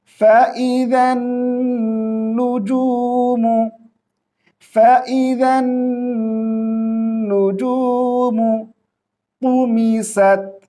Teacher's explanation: یہاں پہ دیکھیں ذال کو ہم نون کے ساتھ ملائیں گے